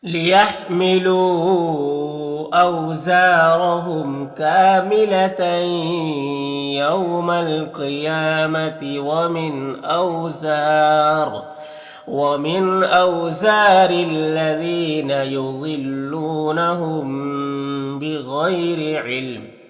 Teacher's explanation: وقف کریں گے تو یہ دو زیر سکون سے بدل جائے گا